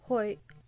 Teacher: hoy often sounds like it would rhyme with the English boy, though the final ejected Y is pronounced with a much tenser throat. Stressed I before Y, glottalized Y, end with a hook, or glottalized N with a hook.